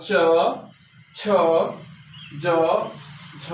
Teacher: ये ताल से स्पर्श होकर के, ताल से स्पर्श होकर के जो है इनका उच्चारण होता है